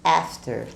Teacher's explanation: Esse A vai ter um sonzinho de E. After. E lembrando que o R também é bem caipira, do interior, After.